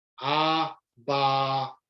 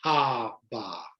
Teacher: Notice the difference between Abba and Haba. Just vowel with a little breath.